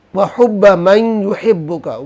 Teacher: میم کو یا سے ملائیں گے، بیچ میں غنہ بھی ہوگا